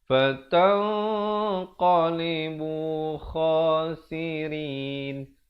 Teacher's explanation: Rin dibacakan dengan nipis dan diwaqafkan dengan 2, 4 ataupun 6 harakat